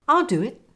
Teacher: Notice the w linking between do and it.